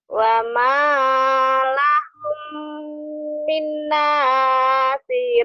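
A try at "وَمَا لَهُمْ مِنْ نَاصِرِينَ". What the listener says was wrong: minnya kurang masuk idghamnya ya. Wa ma lahum itu hukum mim mati idgham mimi. Min itu idgham bigunah nun mati ketemu nun. Jadi kurang nyamber ya. Wa ma lahum min wa ma lahum min nasirin.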